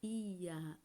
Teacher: O som mais forte vai ser o da vogal e a semivogal vai ter um som mais brando, mais leve. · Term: ditongo crescente